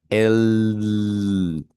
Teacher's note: cuando usted hace ese sonido, usted coloca su mano aquí en el cuello y las cuerdas vocales vibran